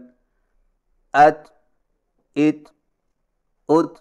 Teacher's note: زبان کی نوک کو ثنائے اولیہ کی جڑ پر مضبوطی سے اس طرح لگائیں کہ آواز کے سختی سے رکنے کے فوراً بعد معمولی سی گھساہٹ ہو، یا یوں سمجھیں کہ زبان کی نوک تالو پر سختی سے لگنے کے فوراً بعد معمولی سی گھساہٹ ہو۔